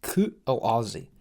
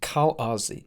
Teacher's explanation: air is stopped from leaving the throat midstream using the glottis. The glottis is essentially the furthest down you can go in your vocal tract, almost where it ends and your lungs begin. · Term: glottal stop